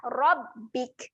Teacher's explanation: Huruf ra. Tebal kan bunyi huruf ra.